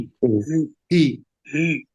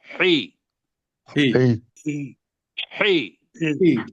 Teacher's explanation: بس اس کو چھوٹی یہ بنانا ہے، اس لیے کہ بڑی یہ کی آواز جیسے آئے گئے وہ ہے ہی نہیں عربی کے اندر